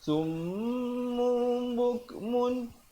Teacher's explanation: Tukarkan bunyi tanwinnya ataupun nunnya itu kepada mim. Asalnya summun, tapi bila datang ba jadi bibir itu sekadar macam nak bersentuhan begitu saja, ya. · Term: iqlab